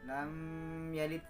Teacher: Mim sukun ketemu ya. Harus dibaca jelas. Apa yang jelas? Mimnya nggak boleh ditarik-tarik, ditahan-tahan. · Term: Izhar safawi